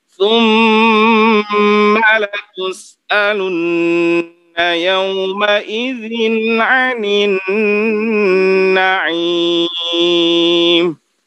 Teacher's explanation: latus'alunna dengung tasydid, kemudian yauma idzin ini dibaca jelas, tidak boleh yauma idzin.